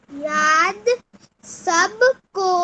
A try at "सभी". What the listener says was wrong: सभी सब नहीं है बच्चा, वो सभी लिखा हुआ है। याद सभी को आई